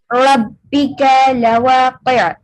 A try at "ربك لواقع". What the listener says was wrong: ربك لواقع. Say the kaf clearly. ربك لواقع.